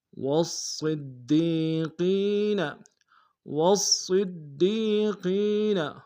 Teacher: صاد کو موٹا ادا کریں گے، تشدید زور دیں گے. دال کو یا کے سامنے آئیں گے، یا مد ایک انداز میں کھینچیں گے.